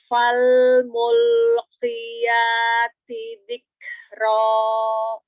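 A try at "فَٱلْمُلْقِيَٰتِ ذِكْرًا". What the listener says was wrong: T-nya masih kurang sedikit. Fal mulqiyati. Nah, dorong lagi. Kalau perlu dorong, tambahkan dorongannya biar dia sama dengan harokat yang lain.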